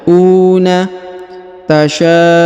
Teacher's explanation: huruf u dipanjangkan dua harakat karena di depan ada wau sukun